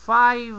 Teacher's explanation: la v en inglés es Sonora Entonces tienes que prolongar el sonido de la v